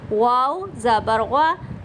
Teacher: واو آپ نے ہونٹوں کو گول کر کے پڑھنا ہے. ٹھیک ہے, واو ہونٹوں میں جیسے ایک ہول سا ہے نا, گول دائرہ رہے, ہونٹوں کو ملانا نہیں ہے.